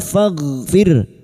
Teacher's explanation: ro sukun yang didahului kasrah kita baca tarkik